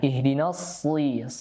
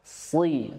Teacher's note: huruf sad itu tebal, ya. Tebalnya juga ekstra, ya, seperti dhad, to dengan dha, ya.